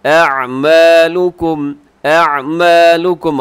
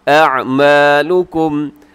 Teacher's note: عین وسط حلق سے ادا ہوتا ہے، یعنی حلق کے درمیانی حصے سے